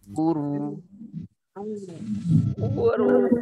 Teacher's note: Pastikan yang hamzahnya tipis, ro-nya tebal